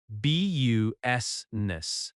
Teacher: The I in the middle is not strongly pronounced.